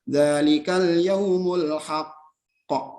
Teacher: Jadi huruf qalqalahnya itu bertasdid. Cara membacanya yaitu dengan ditahan 2 harokat, kemudian diqalqalahkan atau dipantulkan. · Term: qalqalah akbar